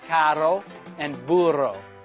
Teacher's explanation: R is pronounced r, and you can trill it in words like carro and burro.